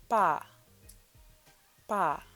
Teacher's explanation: makes a soft p sound it's actually between like a soft p and a b